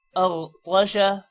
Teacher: غین پر قلقلہ نہیں کرنا